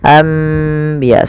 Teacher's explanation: Membalikkan suara nun menjadi suara mim. Awalnya anbiya Allah, karena bertemu dengan ba maka diganti dengan mim, maka dituliskan di atasnya dengan bentuk mim ini agar dibaca anbiya sambil ditahan 2 harokat. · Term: iklab